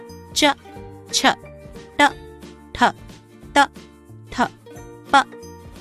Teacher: जिन ध्वनियों का उच्चारण करते समय स्वर तंत्र में कंपन उत्पन्न नहीं होती उन्हें अघोष कहते हैं